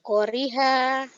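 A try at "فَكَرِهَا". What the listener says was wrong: konya salah. Nggak ada yang panjang. Fakariha.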